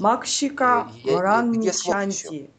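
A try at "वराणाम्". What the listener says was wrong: Нет, там нету в рамичанти, там есть вранам. Вранам. Полный слог.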